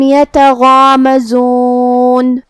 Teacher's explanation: غین کی ادائیگی حلق کے اوپر والے حصے سے ہے. غین حروف تفخیم میں سے بھی ہے تو ہمیں اسے بھاری آواز میں پڑھنا ہے. جو کہ اس کے بعد مد الف ہے اور مد الف اپنے پیچھے والے حرف کا حکم لیتا ہے تفخیم میں اور ترقیق میں، اور جو کہ اس سے پہلے حرف الغین ہے تو ہم غین کو اور مد الف کو دونوں کو بھاری آواز میں ادا کریں گے. · زا کی ادائیگی زبان کے نوک اور دونوں دانتوں کے اندرونی کناروں سے ہے جو کہ اس پہ پیش ہے تو اس کا دھیان رہے.